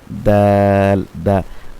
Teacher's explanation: দাল হচ্ছে 11 নাম্বার মাখরাজ জিহ্বার আগা সামনে উপরের দুই দাঁতের গোড়ার সঙ্গে লাগবে